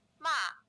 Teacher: a fourth tone, which is a high falling tone with a 5-1 contour